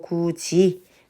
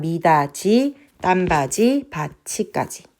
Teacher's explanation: 그다음 미다지 딴바지 바치까지 그래서 디귿은 지으로 티은 치으로 바뀌어서 발음된다